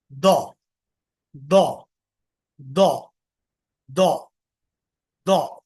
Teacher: right side use कर रहे तो राइट साइड के दाढ़ में जबान लगेगी लेफ्ट साइड यूज़ कर रहे हैं तो लेफ्ट साइड के दाढ़ में जबान लगेगी मोटी आवाज आएगी